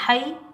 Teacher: ہا کے اوپر زبر ہا کو ہم یا ساکن کے ساتھ ملائیں گے. یہ یا لین ہے. اس کو ہم نرمی اور جلدی سے ادا کریں گے بغیر کھینچے پڑھیں گے.